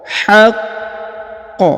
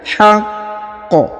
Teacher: Haqq ya, ditahan dulu lalu dipantulkan ya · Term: qalqalah